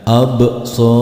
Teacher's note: Pada lafaz berikutnya absarihim, di sini setelah alif ada huruf ba berharokat sukun, di mana ba adalah salah satu huruf qalqalah. Maka ketika membaca huruf ba berharokat sukun harus dipantulkan.